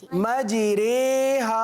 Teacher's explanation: امالہ کا مطلب یہ ہے کہ زبر کو زیر کی طرف اور الف کو یا کی طرف مائل کر کے پڑھنا